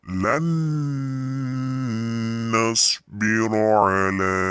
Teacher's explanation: jadi dibacanya ada mendengungnya, dimasukkan dengan mendengung nih. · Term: idgham bi gunah